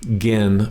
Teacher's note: Gin, flat tone and short.